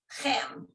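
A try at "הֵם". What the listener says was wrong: Hem. This is the H. This is a hey. Hem.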